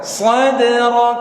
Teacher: huruf dal wajib mantul karena ini huruf qalqalah. Jangan sadrak, tapi sadrak.